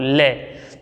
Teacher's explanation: उसके बाद ले को बोलते हैं ले। ले को बोलते समय हमारी जीभ की जो नोक है वो तुरंत दांतों को स्पर्श करती है, वो भी कौन से, ऊपर वाले को, ले।